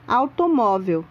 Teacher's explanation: Repare que A é pronunciado com mais intensidade que U. Automóvel, a letra U quase não aparece, por isso é chamada de semivogal.